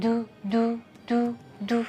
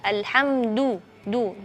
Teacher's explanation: jadi tidak ada angin ketika melafalkan huruf Dal karena huruf Dal memiliki sifat jahr